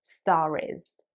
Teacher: the R sound at the end of star will be pronounced like in American English because there is a vowel that follows it. So it will sound something like, this star is very bright.